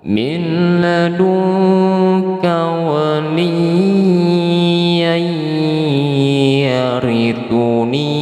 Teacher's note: Kalau kita sambungkan, ini hukumnya mad iwadnya gugur, dia berubah menjadi idgham bi gunnah.